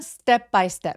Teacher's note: 크트프 소리는 살짝 된 소리를 내게 됩니다. 그래서 스텝바이 스텝 해도 되지만 스텝바이 스텝 이렇게 살짝 된 소리로 소리를 내면 뭔가 좀 쫀득한 느낌이 드실 거예요.